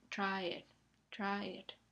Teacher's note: La a y la e se pronuncian con la misma duración. Son vocales normales, verdaderas, que luego aunque forman una secuencia tienen que estar en dos sílabas diferentes.